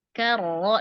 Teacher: Karo. Nah, ro-nya di sini tebal ya, karena dia berharakat fathah